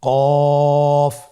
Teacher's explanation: আবার বলুন কফ কফের মাখরাজ স্ক্রিনে লক্ষ্য করুন এখানে আমরা মাখরাজের বা উচ্চারণের স্থান দেখতে পাচ্ছি কফের মাখরাজ হলো জিহ্বার গোড়া তার বরাবর উপরে তালুর সঙ্গে লাগিয়ে উচ্চারিত হয়